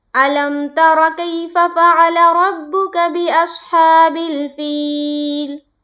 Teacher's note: را کو ہم پر پڑھیں گے، موٹا کر کے پڑھیں گے